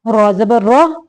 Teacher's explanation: ये रा के ऊपर ज़बर है, इसको मोटा पढ़ेंगे